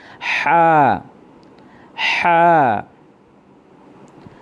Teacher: হা, হা হলকের মধ্যখান হইতে হা উচ্চারিত হয়। হা আমাদের গলার ভিতর থেকে, হলকের মধ্যখান থেকে উচ্চারিত হবে, একটু ডাবায়া বলতে হবে।